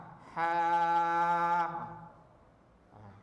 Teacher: tengah-tengah halqum ni adalah kedudukan huruf ha